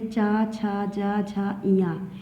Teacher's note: चा से लेके इया तक के व्यंजन को तालु कहते हैं और ये चा वर्ग में की श्रेणी में आते हैं और इन्हें तालव्य कहते हैं।